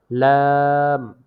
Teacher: জিহ্বার আগার কিনারা সামনের উপরের দাঁতের মারির সঙ্গে লাগিয়ে উচ্চারিত হয়